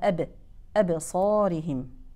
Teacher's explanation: له اهتزاز في مخرج الحرف حاله سكوني